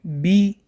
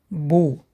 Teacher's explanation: Произносят, плотно смыкая обе губы. С фатхой читается ба, с касрой читается би, с даммой читается бу. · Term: буква ба